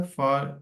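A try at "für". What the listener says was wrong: फार आपने तकरीबन 3-4 दफा फार पर, फार नहीं फ्यूर।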